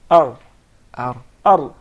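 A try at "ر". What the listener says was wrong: There is a repetition of the ra. He actually pronounced several ra's. We just want one ra.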